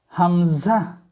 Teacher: হামজাহ কণ্ঠনাল শুরু হইতে হামজাহ উচ্চারণ হবে